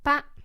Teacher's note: No tone on it. It's unstressed.